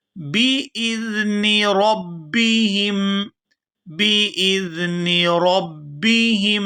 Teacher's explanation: ہا کو میم مشدد کے ساتھ ملائیں گے تو غنہ کریں گے